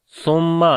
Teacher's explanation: सा को नरम पढ़ेंगे और मीम के ऊपर शद है गुन्ना करेंगे